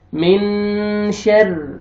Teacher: نون ساکن کے بعد حروف اخفاء میں سے شین ہے آپ نے اخفاء کرنا ہے نوز میں ساؤنڈ لے کے جائیں گے